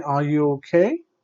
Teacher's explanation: it's a close-ended question it goes up and the answer is usually yes or no